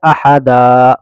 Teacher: دو زبر پر اگر آیت کریں گے تو اس کو کھینچ کر پڑھیں گے